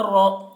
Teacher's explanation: را زبر را. را کے اوپر زبر ہے اس لیے را کو پر پڑھیں گے